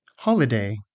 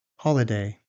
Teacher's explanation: This word has stress on the first syllable.